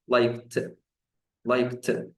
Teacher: او لايك اخرها صوت ك، والك صوت فويسلس ما فيهوش فايبريشن. ففي الحالة دي انا مضطر انطق الدي لما احطها في الاخر نهوت انطقها ت.